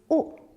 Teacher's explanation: When I make this sound, my lips are rounded and my tongue is at the back of my mouth.